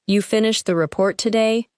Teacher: the word today may be stressed, because the timing is surprising